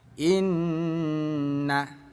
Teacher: Kita baca dengung dua ketukan. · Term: ghunah musyaddadah